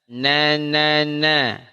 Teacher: Nun ujung lidah bertemu dengan gusi